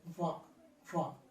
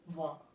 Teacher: ఒక దంతం అంటే పై దంతాల వరుస, పై దంతాల వరుసను కింద పెదవిని టచ్ చేస్తాం. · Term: దంతోష్ట్యం